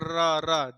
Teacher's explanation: इसका मतलब क्या होता है, लुंठित मतलब क्या होता है, रा जैसे लड़खड़ा करके उच्चारण होता है, लड़खड़ा करके, जैसे रा रा जिह्वा लड़खड़ा रही है, इसलिए इसको लुंठित वर्ण कहते हैं। और जिह्वा में कंपन होता है, इसलिए इसको प्रकंपित व्यंजन भी कहते हैं। तो रा लुंठित वर्ण है और प्रकंपित व्यंजन है।